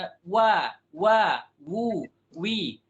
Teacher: makhrajnya kembali ke makhraj aslinya yaitu wau di dua bibir